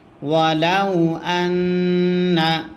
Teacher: নুনে যদি তাসদিদ হয় গুন্না করা ওয়াজিব হয়